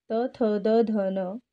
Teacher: त, थ, द, ध, न हा दंतवर्णाचा गट आहे.